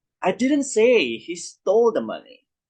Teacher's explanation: So the stress is actually on say and also stole, which emphasize the denial and shifts the blame to someone else.